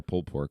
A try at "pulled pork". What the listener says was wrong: like how you say pulled pork. Pulled pork. You don't even say the end of the word pulled. You say pulled pork. Pulled pork. I think that's how most people say pulled pork.